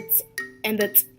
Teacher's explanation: The first one is the dental click known as “tut” or “tsk” and is made by putting the tongue just behind the front teeth.